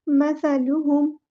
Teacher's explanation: میم پہ رکنا نہیں ہے، اظہار شفوی ہوگا